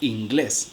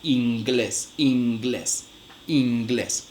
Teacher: en un contexto en el que la consonante que sucede es velar, la consonante nasal también se realiza de manera velar. Entonces, miren lo que ocurre con la palabra inglés.